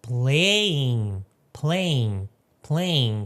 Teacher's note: o ing a gente pronuncia mais como in, só. Não pronuncia o G no final.